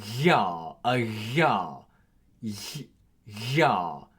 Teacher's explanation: G makes a voice palatal fricative, and it's a sort of a weird sound. It's like a ya, ya sound. This occurs in the middle of words before front vowels.